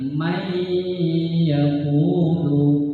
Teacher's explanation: Mannya menjadi mai, dilebur, disatukan, dimasukkan langsung ke huruf ya. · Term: idgham